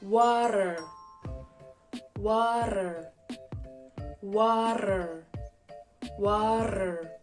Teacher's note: just let the air make your tongue flap, sort of like a flag in the wind.